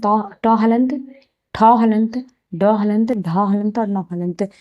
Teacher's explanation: तो ट वर्ग का उच्चारण स्थान मूर्धा।